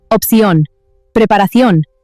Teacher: You are shifting the entire weight of the word to the very end. · The accent mark over the letter O means you must punch that last syllable.